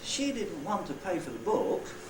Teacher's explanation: the pitch contour on the nucleus is different from all the others. It goes down and then comes up again.